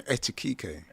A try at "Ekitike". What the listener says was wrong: Yeah, you were saying like etiquette, but it's Ekitike.